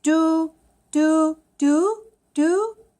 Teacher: it's D you with the rising tone